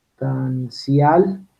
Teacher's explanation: Como esta S está antes de T, la dentalizamos.